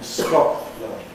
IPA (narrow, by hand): ˈskɒʔlənd